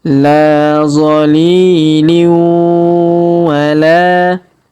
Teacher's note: tanwin in bertemu dengan waw bertasdid, maka tanwin innya melebur masuk ke huruf waw bertasdid. Kita tahan dan tekan ya.